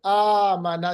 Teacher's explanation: मद असली है, बिल्कुल कोई इसमें सबब नहीं है, तो इसको आमना सिर्फ एक अलिफ के बराबर लंबा करेंगे